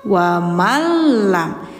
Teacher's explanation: Jadi, N-nya kayak enggak ada dilebur dimasukkan ke si lam. Nah, ini masih termasuk hukum idgham bila ghunah.